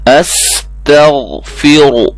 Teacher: را موٹی ہوگی، غین کو موٹا کرنا ہے، باقی سب کو باریک کرنا ہے